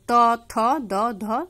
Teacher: বাংলায় দন্ত ব্যঞ্জন গুলি হলো ত থ দ ধ দন্তন্য দেখো উচ্চারণ করার সময় দেখো জিহ্বাটা তোমাদের দাঁতের মধ্যে স্পর্শ করে